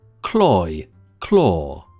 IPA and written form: klɔɪ klɔː (cloy claw)